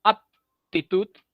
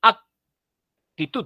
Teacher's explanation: labios te acuerdas bilabial aptitud y otra cosa es actitud separando los labios y haciendo la oclusión en la parte posterior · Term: el fonema de la k